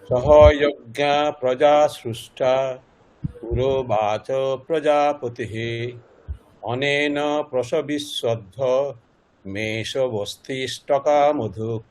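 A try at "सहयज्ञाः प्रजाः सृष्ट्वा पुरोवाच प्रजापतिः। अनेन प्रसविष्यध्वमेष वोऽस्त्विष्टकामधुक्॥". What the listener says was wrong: আচ্ছা হ্যাঁ ভুল হয়েছে একটু। আচ্ছা আপনার ওই সহযজ্ঞা মানে পরে প আছে বিসর্গের পরে, বিসর্গটা একটু ফ, ওটা স্পষ্ট হচ্ছে না। হ্যাঁ আর একটা জিনিস অনেনা প্রসবিষ্যদ্ধম, এখানে আপনি যে না না অশেষ না, বিচ্ছেদ যেটা করছেন প্রসবিষ্যদ্ধম মানে ম হসন্ত ওখানে থামছেন, তাহলে ম হসন্ত যদি আমি গিয়ে থামি তাহলে কি করে থাকে?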